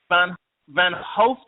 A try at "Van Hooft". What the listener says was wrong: Van Hooft. Yeah, the O is long. It's a Dutch thing.